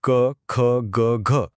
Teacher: इथे बघा क वर्गातले सगळे वर्ण म्हणजे क ख ग घ हे घशातून येतात म्हणून ते झाले कंठ